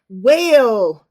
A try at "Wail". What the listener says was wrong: Is that whale? I can never tell if you're saying well or whale when you say that. whale. It's just that sometimes you jump into like a southern accent, and so I can't really tell.